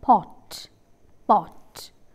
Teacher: during the articulation of this vowel back of the tongue is raised to position fully open